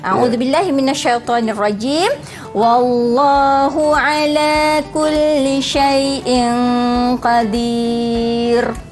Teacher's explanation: maka ra itu juga kita baca secara tarqiq. Nipis sahaja. Tak perlulah membulat-bulatkan mulut.